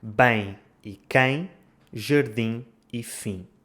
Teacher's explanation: Essas normalmente terminam nos sons nasais em e in.